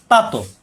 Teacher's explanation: তাই ত সাকিন কলকলা বাড়ি খাবে